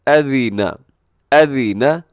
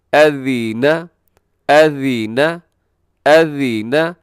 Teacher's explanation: حمزہ کو لمبا نہیں کرنا، ذال ہے نرمی سے پڑھنا، نیچے زیر ہے۔